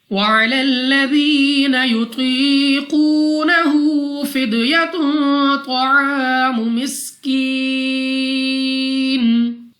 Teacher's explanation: وَعَلَى الَّذِينَ يُطِيقُونَهُ فِدْيَةٌ طَعَامُ مِسْكِينٍ، ذال نرمی سے ادا کریں گے۔ یا ساکن سے پہلے زیر یا مدہ 2 سیکنڈ تک کھینچ کر لمبا کر کے پڑھنا ہے۔ قوا مستعلیہ میں سے ہے، موٹا پڑھیں گے، منہ اور آواز کو کھول کر۔ · قاف مستعلیہ میں سے ہے، موٹا پڑھیں گے